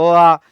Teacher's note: अ आ की बात करें तो अ आ उच्चारित कंठ से होते हैं